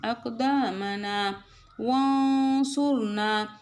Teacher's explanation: நூன் சாக்கினை மூக்கில் மறைச்சு சொல்லணும் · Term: இஃபாவினுடைய ரூலிங்ஸ்